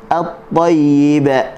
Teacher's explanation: jangan baca tayyib dengan hujung lidah, tak boleh. Dengan tengah lidah.